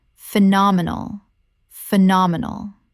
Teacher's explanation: 4 syllables with the stress on the second.